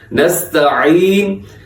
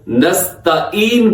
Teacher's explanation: عین کو حلق سے ادا کرنا ہے، وسط حلق یعنی حلق کا درمیان اس کا مخرج ہے